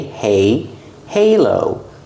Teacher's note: Pronounce the H, plus a long A, like day and say